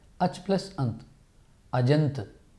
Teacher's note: मित्रों च अल्पप्राण चा है, अल्पप्राण के चा के साथ अ ध्वनि मेल होते हुए ज बनेगा